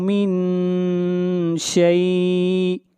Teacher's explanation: من شیء یہاں پر اخفا ہو رہا ہے، آواز ناک میں جائے گی